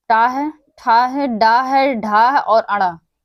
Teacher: ट है, ठ है, ड है, ढ है और ण। यह पांच हमारे हैं। यह मूर्धा से उच्चारित होते हैं। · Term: मूर्धन्य